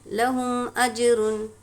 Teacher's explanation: قلقلہ کریں گے اج میں · میم ساکن کے بعد با اور میم کے علاوہ کوئی حرف آئے تو ہم کو میم کو ظاہر کر کے بلا غنہ کے جلد پڑھیں گے. یہاں پر اظہار شفوی کا قاعدہ ہوگا.